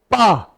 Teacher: पा का उच्चारण स्थान ओष्ठ है।